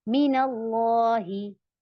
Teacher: नून और मीम को बगैर तशदीद के पढ़ती हैं और इसको जरा भी नहीं खींचते। इसकी कोई मिकदार नहीं होती, ऐसे हम लंबा खींच के नहीं पढ़ते, जल्दी से अदा कर देते हैं। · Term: गुन्नाए आनी